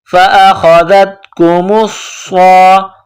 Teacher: صاد میں سختی کرنی ہے، صاد کو موٹا کرنا ہے، صاد میں سیٹی کی آواز پیدا کرنی ہے.